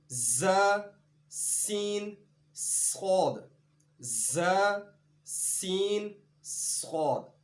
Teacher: سیٹی کی آواز پیدا کرنے کے ساتھ یہ حروف ادا ہوتے ہیں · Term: حروف صفیریہ